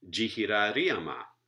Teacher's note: you get a secondary stress on the third syllable before the primary stress